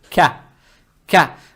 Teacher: Далее стоит буква каф, она мягкая с фатхой. Фатха приобретает легкий оттенок я, то есть ка.